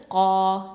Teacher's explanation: இது வந்து காஃபு வந்து அக்ஸல் லிசான் எழுத்து, அடி நாவு எழுத்து.